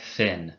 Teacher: a voiceless dental fricative like thin but engage your voice box with this sound make a th